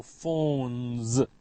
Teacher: It ends with the sound n, n. All nasals, n, m, n, are voiced